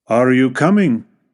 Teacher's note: La entonación sube al final de la pregunta. Este tipo de entonación se utiliza para indicar que se está haciendo una pregunta y se espera una respuesta por parte del oyente. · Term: entonación ascendente, Entonación ascendente